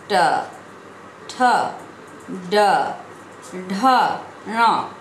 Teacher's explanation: जब हम इन व्यंजनों का उच्चारण करते हैं तब वायु कंठ से निकलकर मूर्धा का स्पर्श करते हुए बाहर निकलती है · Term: ट वर्ग